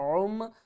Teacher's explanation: عین کو ہم نے حلق کے درمیان والے حصے سے ادا کرنا ہے